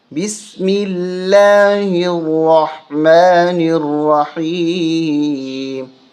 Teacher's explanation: بسم اللہ میں لفظ اللہ کو باریک کر کے پڑھا جاتا ہے۔